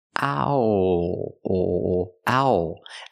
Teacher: It's not all, it's owl. It's the sound ow, like how and now, plus the dark L.